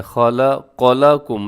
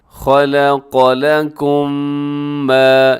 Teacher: آس پاس دونوں حروف موٹے ہیں لیکن درمیان میں جو لام ہے وہ باریک ہے۔ تو آپ نے کیا خیال رکھنا ہے یہاں پر کہ لام کو باریک ہی رکھنا ہے۔ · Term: لام باریک